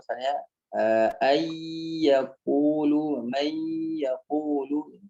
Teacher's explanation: jadi ya nun sukunnya masuk ke huruf ya langsung.